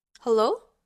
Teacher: The second tone is marked with this small line that goes up because the pitch goes from a lower pitch to a higher pitch. The tone sounds rising and questioning, and we often hear this in English words that are posed as a question.